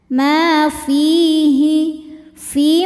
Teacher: Ma fi mad thobi zohiri karena ada ya sukun sebelumnya kasrah. Cara bacanya panjang dua harakat.